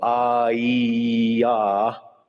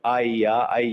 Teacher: if you make the vowel long, it's the vowel E. But if you make it short, I-ya, then the E becomes a Y. They're both pronounced in exactly the same place in the mouth and so forth.